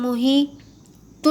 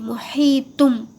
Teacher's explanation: تنوین کی آواز کو میم کی آواز سے بدل کر پڑھیے